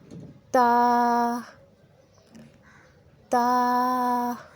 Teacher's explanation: تا، تا، تا کا مخرج جب زبان کی نوک ثنایا علیہ کے جڑ سے لگے تو تا ادا ہوتا ہے۔ جب زبان کی نوک ثنایا علیہ کے جڑ سے لگے تو تا ادا ہوتا ہے۔